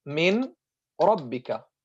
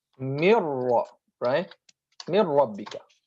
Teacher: merging the first, which is the sakin letter, non-vowel letter, into the second mutaharrik vowel letter, so that they become one stressed letter of the type of the second letter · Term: idgham